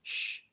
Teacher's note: a regular sh sound that we make in english that comes out more right behind our teeth